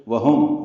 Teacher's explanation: واو ہونٹوں کی نا تمام گلائی سے